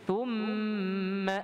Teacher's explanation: Kemudian dimuncungkan jadilah thu. Thum dengan dengung, mim tasydid, wajib gunnah.